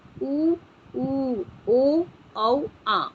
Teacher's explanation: जिन स्वरों का उच्चारण करने में हमारे ओष्ठ, हमारे होंठ क्या हो जाते हैं, गोल हो जाते हैं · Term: वृत्ताकार